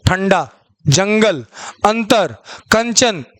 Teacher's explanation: देखिए अनुस्वर होता क्या है, अनुस्वर है यहाँ पे, ये नहीं रहेगा मात्रा, ठीक है। देखिए अनुस्वर के उच्चारण में वायु नाक से निकलती है और उच्चारण झटके के साथ होता है